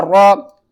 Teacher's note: را زبر را، را زیر ری۔ را کے اوپر جب زبر ہوگی را کو آپ نے موٹا کر کے پڑھنا ہے